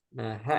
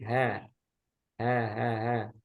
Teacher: Nah, ha ini tipis. Jadi bukan he, tapi ha.